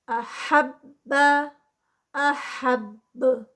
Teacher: مکلبین، اور اینڈ پہ 4 کاؤنٹس. احب، احب، یہاں پر با کا قلقلہ ہوگا اینڈ پہ اسٹاپ پہ. جب اس کو اسٹاپ کریں گے اور فرسٹ ٹائم پہ اس کو تشدید کے ساتھ احب، اور پھر احب اینڈ پہ قلقلہ.